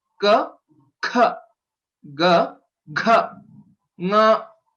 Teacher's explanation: The second and the fourth letters are called Mahaprana, Mahaprana Aksharani, or Mahaprana Varanaha, and they require more air or higher energy to pronounce it.